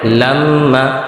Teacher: নাকের বাসি হইতে গুন্না উচ্চারিত হয়